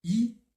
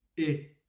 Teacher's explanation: c'est la même position des lèvres, c'est la même position de la langue. La différence va être dans l'ouverture. Donc on dit I très fermé, on ouvre un tout petit peu et on a le son E.